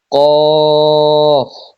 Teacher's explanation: জিহ্বার গোড়া থেকে একটু আগে বাড়িয়ে তার বরাবর উপরে তালুর সঙ্গে লাগিয়ে উচ্চারিত হয় কাফ